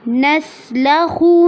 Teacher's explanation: نسلخ میں سین پہ سیٹی کی آواز ہوگی اور آواز کو چلانا ہے